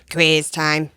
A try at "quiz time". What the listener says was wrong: That almost sounded like you said Chris time. Quiz time. Quiz is quiz.